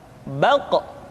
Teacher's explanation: Diucapkan dengan suara yang tebal dan dalam posisi sukun, maka terdengar pantulan suara.